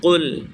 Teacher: جڑ زبان تالو کے نرم والے حصے سے مل کر قاف ادا ہوتا ہے۔ قاف، قل بولیں، قل زبان کی جڑ کو اوپر کے تالو کے نرم حصے سے لگائیں گے تو قاف ادا ہوتا۔ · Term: بڑا والا قاف